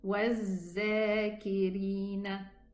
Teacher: The fourth mistake is pronouncing the letter dhal also as a zay, same as the letter dha